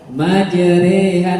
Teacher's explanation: Bacaan antara fathah dan kasroh atau bacaan mereng pada bunyi roh. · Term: imalah